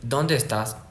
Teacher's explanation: es pregunta porque sube, sube y luego baja.